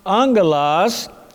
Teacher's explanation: In the Greek language, if you have 2 gammas, 2 G sounds together, it is pronounced as an ng, in English as in the word sing, S-I-N-G, the ng sound together.